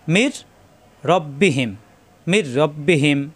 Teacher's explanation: নুন সাকিনের পরে র আসা এখানে তাজদিদ ধরে গুন্না ছাড়া মিলাতে হবে কোন গুন্না হবে না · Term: ঈদগামে বেলা গুন্না